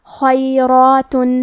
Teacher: کلمت خیرات میں حرف الخاء ہے، لہذا ہمیں خاء کو تفخیم سے پڑھنا ہے۔ را کی حرکت ہے زبر، تو ہم حرف را کو بھاری آواز میں پڑھیں گے، اور کیونکہ اس کے بعد کھڑا زبر ہے تو یہاں مد الف ہے، تو ہمیں مد الف کو بھی تفخیم سے ادا کرنا ہے۔